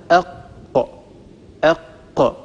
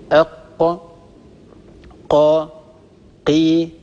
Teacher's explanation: أول مخرج من هذه المخارج هو أقصى اللسان مع ما يحاذيه من الحنك الأعلى، الحنك اللحمي · طبعا بإمكانكم أن تجربوا هذا، أق أق، أنطق القاف وهي ساكنة، ستلاحظوا ارتفاع في أقصى اللسان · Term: مخرج حرف القاف